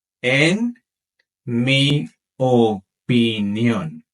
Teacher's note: Make sure to stress that last syllable in opinión.